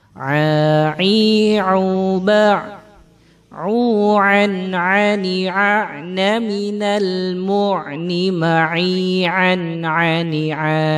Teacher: Ain keluar dari tenggorokan bagian tengah.